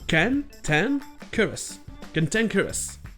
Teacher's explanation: Mais bizarrement, ici, la première syllabe se prononce comme si elle était accentuée, avec le son A. Donc ça fait que les deux premières syllabes ont le son A, et les deux dernières ont le son E. Cantankerous.